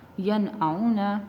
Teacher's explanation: ہم نے نون کی آواز کو اپنے ناک میں نہیں لے کے گئے ہیں، چھپایا نہیں ہے، اس کو ظاہر کر کے پڑھا ہے، تو یہ اس کا مطلب یہ ہے کہ ہم نے یہاں پہ اظہار کیا ہے۔